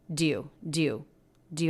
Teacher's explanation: it's almost like we're making it just one syllable connecting the d right onto the word you